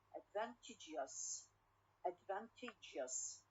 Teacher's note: so here we have we move the stress from the second to the third one